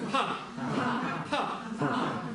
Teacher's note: Х здесь нет, запомните, х у нас здесь звука нет, здесь просто аспирация. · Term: Аспиративная